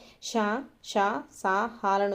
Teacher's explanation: గాలిని బయటికి ఊదుతూ పలికే అక్షరాలను ఏమని పిలుస్తారు, ఊష్మాలు అనేసి పిలుస్తారండి. ఊష్మాలు అంటే మనకి ఏమేమి వస్తాయి, ష, ష, సా, హాలను వచ్చేసి మనము ఊష్మాలుగా చెప్తాము.